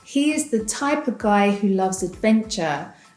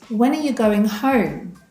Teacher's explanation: The words of and are, become uh when reduced. So all you hear is the schwa sound.